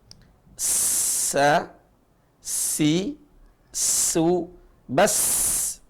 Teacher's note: huruf Sin tipis sekali cara bacanya huruf Sin sa si su bas ada desis yang begitu kencang